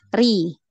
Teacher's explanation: Ya, naik ya. Ri tipis ya, turun.